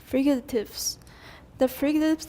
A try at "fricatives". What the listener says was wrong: Remember we pronounced that with the aspirated K. Fricatives, not frigatives.